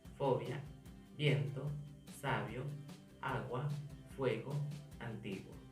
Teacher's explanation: dos vocales juntas que al pronunciarse emiten un mismo golpe de voz, es decir, que suenan juntas en una misma sílaba. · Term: diptongo